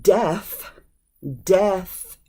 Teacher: that voiceless th that can be kind of hard for some people to pronounce